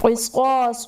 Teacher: قاف اور صاد دونوں حروف مستعلیہ میں ہیں اس لیے انہیں پر پڑھا جائے گا۔ الف سے پہلے صاد پر زبر الف مدہ کا قاعدہ ہوگا۔